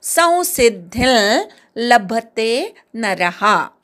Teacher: धी वरच्या अनुस्वाराचा ल अनुनासिक ल असा उच्चार करायचा